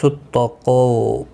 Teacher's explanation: قو واو مدہ ہے، 1 الف کی مقدار کے برابر کھینچ کر پڑھیں گے